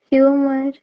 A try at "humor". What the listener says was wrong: So generally வந்து we pronounce it as humor, okay, but ஆனா the correct pronunciation is நான் உங்களுக்கு சொல்லி கொடுத்தேன்ல alphabetsல வந்து R வரப்போ the R that comes at the end, okay, the R that comes at the end is almost silent, okay, அதை வந்து பெருசா நம்ம pronounce பண்ண மாட்டோம், okay, that is how it is.